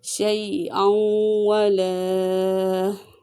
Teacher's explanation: یہاں پہ یا لین ہے، اسے بغیر کھینچے بغیر جھٹکے کے ادا کریں گے